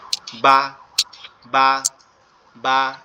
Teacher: বাটা আমাদের দুই ঠোঁট একত্রে লেগে যাবে, পৃথক হয়ে যাবে, তখন আওয়াজটা বেরোবে